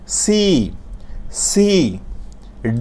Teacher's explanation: আমরা যখন সি বলব একটু মুখ দিয়ে শীষ বের হয়ে যাবে